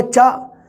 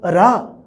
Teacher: ਹਾ ਵਿਚਕਾਰ ਤੇ ਅੰਤਲੀ ਸਥਿਤੀ ਵਿੱਚ ਸੁਰ ਦਾ ਰੂਪ ਧਾਰਨ ਕਰ ਜਾਂਦਾ ਹੈ।